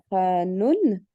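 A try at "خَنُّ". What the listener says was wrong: Khannou. Non, juste nous, parce que là, c'est juste une dama, c'est pas un tanwin. Ouais, Khannou.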